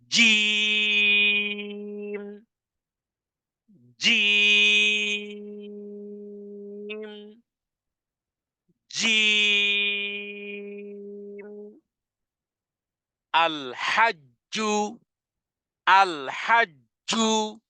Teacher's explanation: পাথরের মত শক্ত হবে আওয়াজটা কঠিন হবে উচ্চারণে ধাক্কা হবে